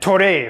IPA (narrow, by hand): toɾe